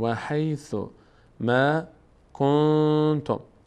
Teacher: پس قاعده 4 اجرا میشه، یعنی اخفا. یعنی نون از مخرج خود ادا نمیشه